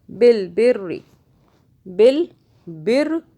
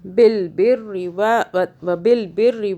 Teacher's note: را کی 2 مرتبہ آواز بنا رہے ہیں، تشدید ہے اوپر